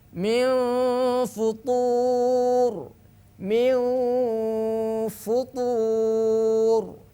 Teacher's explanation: Fa itu adalah huruf tipis, maka dengungnya harus tipis apapun harokat sebelumnya. Kalau dengungnya tebal, maka menyalahi daripada kaedah ilmu tajwid.